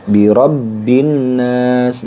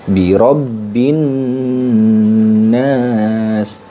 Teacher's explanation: Nah, sebelum kita akhiri ayat ini, di sini ada nun yang bertasydid. Nun bertasydid itu hukumnya adalah gunnah musyaddah, ya, gunnah musyaddah. Jadi didengungkan, ditahan teman-teman.